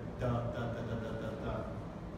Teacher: You can't hold the T sound. You have to stop and release. So it's a tuh. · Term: plosive